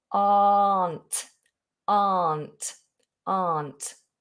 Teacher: ignore the letter r big open mouth